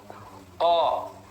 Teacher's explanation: jangan mencucu ko, tapi terbuka. Ko. Nah, rongga mulutnya terbuka.